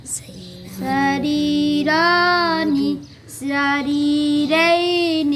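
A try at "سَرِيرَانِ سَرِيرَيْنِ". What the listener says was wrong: آپ دونوں جو ہے نا را پر زبر کو موٹا نہیں پڑتے. سریرانی. سریرائنی. ایک را جو نا سری یہ را باریک ہے.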